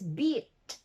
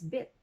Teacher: first we have the two sounds considered to be the high front vowel sounds